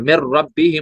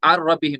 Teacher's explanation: तो हम करेंगे काम, जब इदगाम होगा, इदगाम करते वक्त क्या होता है, कभी कभी वो हर्फ पूरा, नून साकिन की पूरी सिफात गायब हो जाती है, तो गुन्ना नहीं होगा, बिला गुन्ना इदगाम होगा